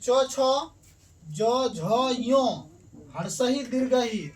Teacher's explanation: का उच्चारण जो है तालु से होता है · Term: तालव्य